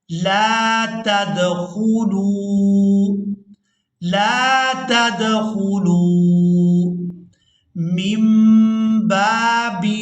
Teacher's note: یہاں پر ہم نے نون کو میم کے ساتھ بدل کر ادا کرنا ہے کیونکہ یہاں اقلاب ہو رہا ہے